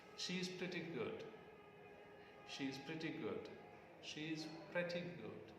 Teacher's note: the falling tone goes to good